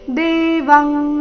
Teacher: ಇಲ್ಲಿ ಅನುಸ್ವಾರದ ಉಚ್ಚಾರಣೆ ಕ ವರ್ಗದ ಅನುನಾಸಿಕದ ರೀತಿ